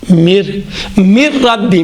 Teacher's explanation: اما مر رب، دیکھیں مر ربی، مر میں کوئی غنّہ، مر ڈائریکٹ ادا ہو رہا ہے، کوئی غنّہ نہیں ہے۔